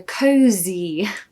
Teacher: you will feel feel great pronunciation tip for cozy you'll notice it's not an S even though it's spelled with an S it's actually a z a zed so cozy conquers are so nostalgic so do you